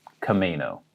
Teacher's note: Emphasis on the may.